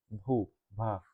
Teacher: स्पर्श घोष महाप्राण ओष्ठ व्यंजन ध्वनि